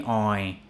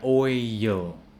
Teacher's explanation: So it sounds like there's a Y before the L